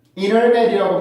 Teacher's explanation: N 발음과 T 발음이 연속될 때는 T 발음을 없애서 발음하는 경우가 굉장히 많습니다 · 인터넷이라고 발음하는 경우가 많죠. 왜냐하면 NT 발음이 연속이기 때문에 뒤에 있는 T 발음을 없앨 수 있어요